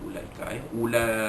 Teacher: Ulaika, jadi ulaika ni waw itu, waw itu tak ada fungsi apa-apa, maka jangan dibaca panjang pada ulaika